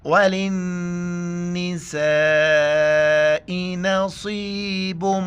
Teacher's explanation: نون کے اوپر شد ہے غنہ کریں گے